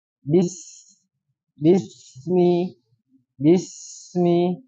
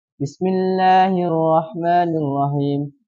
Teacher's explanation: dan mengalir dan banyak udara yang keluar nah ketika mengucapkan Bismi huruf Sin ketika sukun ya kan Nah itu harus dialirkan dan banyak udara yang keluar baik jadi bis Bismi Bismi ya Jadi tidak sempurna ketika pengucapannya